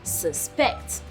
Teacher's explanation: But as a noun, it has the emphasis on the first on the first syllable as suspect. But as a verb, it has the emphasis on the second syllable as suspect.